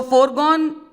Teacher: Because the stressed syllable in foregone starts with G, gone. For is something which we are not stressing.